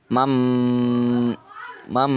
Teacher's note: mengubah huruf nun sukun atau tanwin jadi suara huruf mim sukun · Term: iqlab